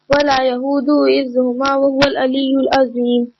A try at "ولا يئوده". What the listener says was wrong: ولا یہودہ نہیں ہے, ولا یعودہ. اودہ.